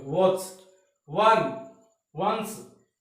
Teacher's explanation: होठ राउंड हो रहे अपने, होठ अंदर की ओर खींचे जाते हैं थोड़े से W वाली साउंड में, वॉच, वन, वंस।